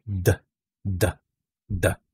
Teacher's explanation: So, mararamdaman natin merong vibration nang gagaling sa ating lalamunan. So, immediately, malalaman natin na itong tunog na ito ay voiced.